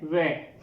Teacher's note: ये जो व है इसका उच्चारण स्थान दो वर्णों से, दो उच्चारण स्थानों से होता है, दंत से और ओष्ठ से। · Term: दंतोष्ठ